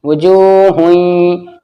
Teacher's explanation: तनवीन के बाद या आ गया, इदगाम नाकिस होगा, आवाज नाक में गूंजेगी